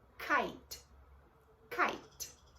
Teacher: Mas esse é diferente, levemente diferente do C, porque o C tem um som K, que sai um ar. Esse tem um som K, que não sai o ar. Então o C é K, que sai um ar para fora, e esse é K, que não sai, ele é mais sutil, como em kite.